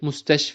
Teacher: And next comes al-mustashfa, an ism that ends with al-AL-ALIF AL-MAQSUWROH. So we elongate the last a sound a little and say mustashfa